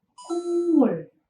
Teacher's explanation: Apabila konsonan kyok di bacim positions bertemu dengan nasal consonant di initial positions, maka konsonan kyok itu waktu kita melafalkan berubah menjadi konsonan iem. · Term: nasal consonants